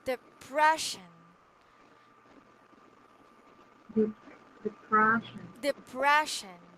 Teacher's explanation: so the second syllable is stressed right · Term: stressed syllable